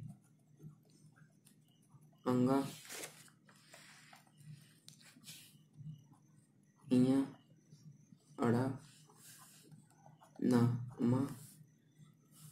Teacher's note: अन्न जो है अनुस्वार कहलाता है। अनुस्वार। इसमें हवा केवल नाक से निकलती है।